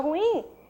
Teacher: nós temos a sílaba tônica oxítona palavra temos um hiato inclusive mas a sílaba prosódica tônica que se destacou é a última · Quando eu falo ruim, eu separo o U do I, então nós temos a sílaba tônica oxítona na palavra, temos um hiato inclusive